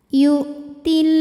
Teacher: Cara membacanya, lam ini panjang 2 harokat. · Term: mad tabi'i muqaddar